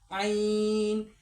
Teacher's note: جب ہم عین بولیں گے تو عین کو بالکل حلق سے نکالیں گے، یہاں سے نکالیں گے، عین، عین خالی، ٹھیک ہے۔